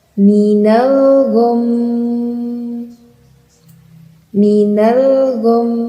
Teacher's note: Ini ada mim bertasydid dan harus kita wakafkan. Jadi yang benar membacanya dengan disukunkan huruf mim, kemudian didengungkan. Mimnya didengungkan.